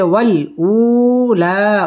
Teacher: মধ্যে তবাই একালিফ টেনে পড়তে হবে আখিরা র পুর হবে আখিরাতি ওয়াও ঠোঁট গোল করে উচ্চারণ করতে হবে